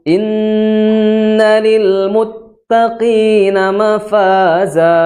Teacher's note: setelah Hamzah ada huruf nun yang bertasjid gimana caranya dengan ditahan dua harakat